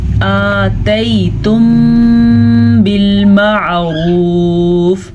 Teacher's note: حمزہ کھڑی زبر آ مقدار اتنی لمبی ہوگی اور یہ یالین ہے، اسے ہم نرمی سے بغیر کھینچے پڑھیں گے. آتیتم بالمعروف، را کو پر پڑھنا ہے، عین کو واضح کرنا ہے.